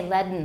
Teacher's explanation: usually we say leaden with nasal plosion